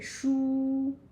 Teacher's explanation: So 书, first tone, which is a high tone.